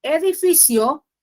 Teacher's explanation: la i es cerrada la o es abierta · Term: diptongo